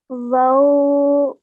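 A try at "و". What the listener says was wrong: Okay, try and say it not with a v sound, but with a w sound, okay?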